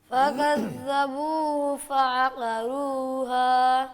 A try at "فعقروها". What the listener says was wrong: قاف کو پر کریں.